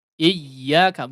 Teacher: Iyyaka ada hentakan di situ ditasydidkan ya. Dihentakkan.